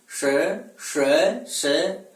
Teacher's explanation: तो ऊष्मा को क्या कहा जाता है, गर्म वायु कहा जाता है। और इनका उच्चारण करने में श्वास वायु गर्म होकर के घर्षण से और बाहर की ओर गमन करती है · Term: ऊषम वर्ण